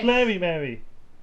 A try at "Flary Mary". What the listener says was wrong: It rhymes with Flary, rhymes with Mary, not Berry. But it doesn't.